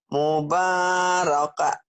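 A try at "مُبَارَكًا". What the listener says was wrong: Kan juga sama Bu. Kenapa mubaraka? Kan juga. Mubarakan. Kecuali dihentikan ya. Kalau dihentikan, mubaraka. Jadi panjang betul.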